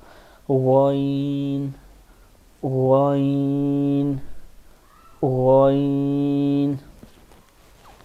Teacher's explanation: اور غین اوپر والے سب سے اوپر والے حلق کے میں مطلب کہ تالو سے زبان کی جڑ سے پیچھے جو گردن کی ابتدا ہوتی ہے اس سے یہ حرف ادا ہوتا ہے. ادنی حلق کہتے ہیں عربی میں اس کو.